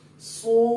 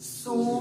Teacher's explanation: دانتوں کو کلوز کر کے آواز کو پورا ادا کریں گے. سو، یہیں سے آواز باریک ہوگی.